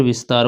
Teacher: दंत सा, क्योंकि उसके उच्चारण करते समय जीभ दांत को छूती है